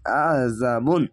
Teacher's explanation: যাওয়ার পাশে খালালিশ একালিশ টেনে পড়বেন। আইন যাবার আইনটিকে মোটা করে গলা চিপে পড়বেন। জাল আলিশ যা, যা বাদ পেশবুন, আযাবুন।